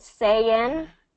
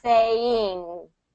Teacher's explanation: Instead of sayin', where the tongue touches the roof of your mouth in the front, sayin', it's saying.